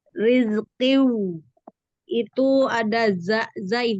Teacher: Huruf zai ee sifatnya shofir, berdesis dan rakhaah mengalir.